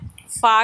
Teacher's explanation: ऊपर के जो दांत होते हैं वो आगे नीचे होठों के पेट को लगेंगे, यानी मोटे हिस्से को लगेंगे, इसीलिए इसको क्या कहते हैं, बतनुश्शफ़तुस्सुफ़ला, बतनुश्शफ़तुस्सुफ़ला, ठीक है।